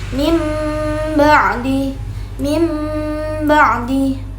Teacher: suara huruf iqlab itu seperti huruf nunnya dibagi diganti seperti huruf mim.